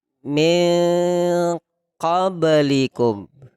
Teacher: Meskipun itu memang cenderung NG, tapi bukan ND.